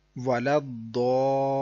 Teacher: تشدید ہے، لہٰذا مد لازم، اس کو بھی لمبا کرنا ہے